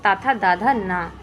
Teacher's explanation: ता वर्ग के जितने भी होते हैं वह सारे दंत होते हैं